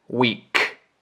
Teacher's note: So alone he pronounces it weeK, again with that K, that puff of air.